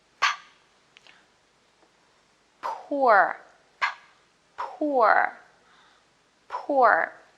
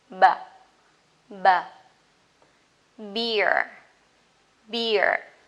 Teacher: The difference is unvoiced, no vibration, and voiced with vibration. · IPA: /p/ - /b/